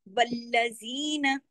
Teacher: आयत number last है, आयत नंबर 10। वल्लजीन, लाम पे तशदीद है, वल सख्ती से जोड़ना है। जी को दो हरकत, नून को सिर्फ एक हरकत।